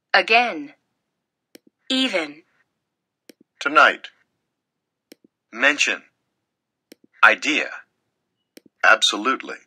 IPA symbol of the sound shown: ə